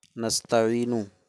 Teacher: نستعین میں یا حرف مد ہے، اس کے بعد نون حقیقت میں متحرک ہے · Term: مد عارض